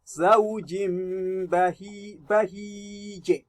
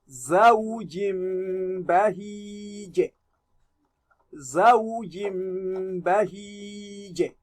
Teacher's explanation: the second kasra, which is your tanween, has been turned to mimun now because of the rule of iqlab